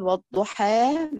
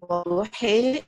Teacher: حد يقول وضحى مفتوحة، طيب وضحي إمالة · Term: الفتح